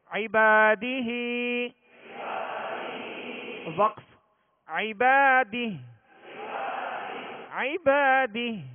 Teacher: ایک الف کی مقدار میں کھینچ کر اس کھڑا زیر کو پڑھیں گے